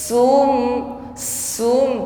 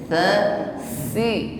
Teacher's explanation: bunyi huruf tsa ketika mengucapkannya tidak dengan bunyi desis